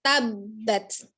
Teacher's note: tabbat hati-hati di huruf ta sifatnya adalah Al haans Ketika disukun Harus nampak allhams-nya ada aliran udara yang mengalir ketika mengucapkan huruf t untuk membedakan dengan huruf tho